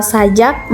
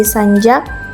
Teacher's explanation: Kata sajak mengalami proses penambahan bunyi n pada tengah kata menjadi sanjak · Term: epetensis